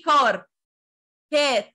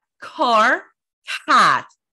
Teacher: the letter C says ك ك ك with a puff of air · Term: aspiration